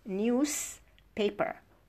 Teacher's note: So we have to assimilate. We have to devoice one consonant, which is the Z, so that both are voiceless.